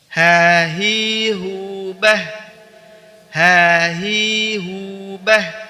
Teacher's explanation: Huruf H dikeluarkan dari tenggorokan bagian bawah seperti kita mengucapkan huruf hamzah. Ini tenggorokan bawah ya.